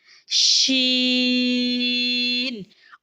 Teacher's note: अदायगी में जबान के दरमियान को तालों की तरफ बुलंद करते हुए बारीक और फैलती हुई आवाज में पढ़ेंगे · باریک اور پھیلتی ہوئی آواز میں پڑھیں گے، جیسے شین، اور یہ 3 حرفی ہے تو اس کو بھی بند مٹھی کی 5 انگلیاں کھولنے کے بقدر لمبا کریں گے، اور اس کی آواز بھی ناک میں نہیں جانی چاہیے، شین، ٹھیک ہے۔